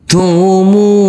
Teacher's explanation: huruf mim dibaca panjang dengan panjang 2 harokat, karena huruf mim ini huruf mim yang berdhamah u bertemu dengan huruf waw sukun.